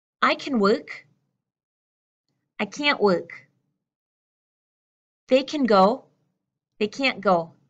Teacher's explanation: there's a much stronger nasal sound there's a much stronger sound coming through this part of your